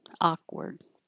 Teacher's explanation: You might hear a little sound as I pull my tongue down from the K position, but you don't make the K on purpose · You won't hear that K really, but you could.